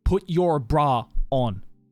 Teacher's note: At the end of bra, the R sound hangs longer than the British version, I think. Well, because like when an American says it, it's like there is a clear distinction between the word bra and the word on.